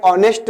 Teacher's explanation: ऑनेस्ट में जो है एच का उच्चारण नहीं होता